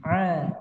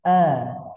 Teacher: Ya, di sini ada huruf alif, ada ain, beda ya makhrajnya. Huruf ain dari tenggorokan bagian tengah. Alif atau hamzah keluar dari tenggorokan bagian bawah.